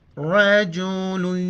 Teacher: را کو موٹا کر کے پڑھیں گے زبر کی وجہ سے ، جیم لام یا دو پیش لوی، رجل یسعی، یا مدہ